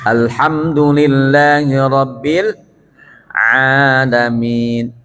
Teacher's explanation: Huruf lahiyah bagian tengah tekan dikit supaya menjadi ain. Kalau tidak ditekan jadi alif.